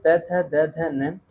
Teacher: दंतव्य से होते हैं त वर्ग के सभी व्यंजन